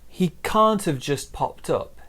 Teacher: So we stress this can't and then we stress the verb there, popped.